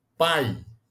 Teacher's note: ele vai do a que é a vogal pro I pai decrescente ele pode ser oral quando a palavra é emitida · E ele pode ser decrescente, quando ele vai do som da vogal para a semivogal, ou seja, do som mais forte para o som mais fraco